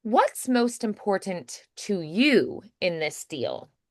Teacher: So, I might emphasize you a little bit more as well because maybe I've already stated what's important to me.